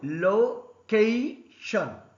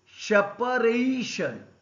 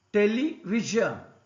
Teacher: Stress should be on the second syllable from the last for the words ending with TION, SION.